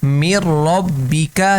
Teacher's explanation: جیسے میر ربیکا، یہاں پر ادغام ہو رہا ہے، میر ربیکا، کہ ہم نے نون کو چھوڑ دیا اور آگے را پڑھ لیا